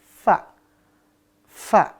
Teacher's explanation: ujung gigi seri atas bertemu bibir bawah bagian dalam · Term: huruf Fa